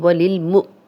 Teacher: نی یا مدہ ہے، جزم والی یا پیچھے نون پہ زیر 2 حرکات لمبا کریں گے · وللمؤمنین واو پہ ہم گول کریں گے. اب حمزہ پہ جب بھی جزم آئے گی ہم حمزہ کو جھٹکے سے پڑھتے ہیں، یہ واو نہیں پڑھی جائے گی کیونکہ حمزہ ہے اور حمزہ کے اوپر جزم بھی آ گئی ہے تو ہم حمزہ پڑھیں گے.